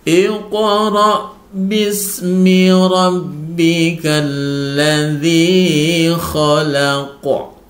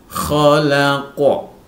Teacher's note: Qalqalah kubra itu dipantulkan karena disukunkan atau dibaca wakafnya